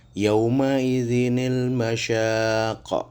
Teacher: ketika terdapat tanwin bertemu dengan hamzah wasol, dibaca sebagai nun wikoyah, nun kecil yang dibaca kasroh